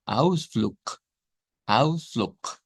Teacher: Termina en G, pero se cambia por K.